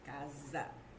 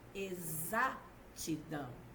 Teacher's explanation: o fonema Z pode ser representado pela letra s a palavra casa o s tem som de z